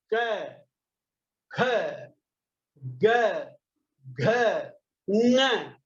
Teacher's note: ये सारे अक्षर बोलते समय आपको कंठ से ये अक्षर निकलते हैं, ये ध्यान रखना पड़ेगा। तो आप जब भी बोले तब ये ध्यान रखें कि मेरे कंठ से ये निकल गया।